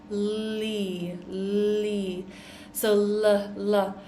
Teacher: the L sound as in li, li. So l. Our tongue is in the front here.